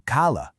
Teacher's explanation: if you just stretch that vowel out a little bit longer to kala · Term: vowel length